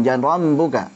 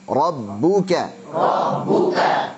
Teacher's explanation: Dan rabbuka jangan masuk hidung,